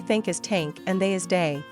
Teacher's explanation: Most people tend to pronounce it as T and D sounds, so they say think as tank and they as day, while Japanese speakers replace it with S and Z sounds, so thank and clothed are identical to sank and closed for them, respectively.